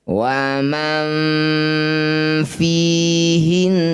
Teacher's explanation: Waman fihinna nun bertasydid disebut bacaan gunah musyaddadah ya. Bunyi nun didengungkan dua harakat